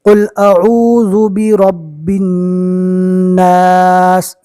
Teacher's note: نون کے اوپر تشدید ہے، ایک الف کے برابر گنہ ہوگا